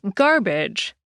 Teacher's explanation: In English, we say garbage, emphasis on the gar, and hardly saying the sound in badge at all. When we swallow a mid-word vowel like that, by the way, it's called a schwa.